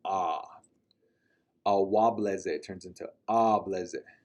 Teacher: a lot of times our speakers will turn aya or awa into ah. They'll kind of drag the ah sound